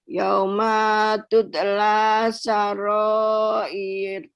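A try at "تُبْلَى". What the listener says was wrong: Itu huruf ba. Yauma tubla.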